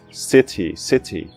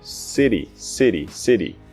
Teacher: no inglês americano, esse TY muitas vezes se pronuncia como um DY, um DI